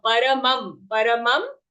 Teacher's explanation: There is an anuswara. So for the anuswara, we have to say a half ma.